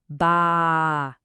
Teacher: Now, let's add its silent partner, the Alif. The sound stretches for 2 full beats. It becomes ba. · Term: long ah sound